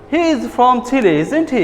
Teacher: Your voice goes up when you say, isn't he? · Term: raising intonation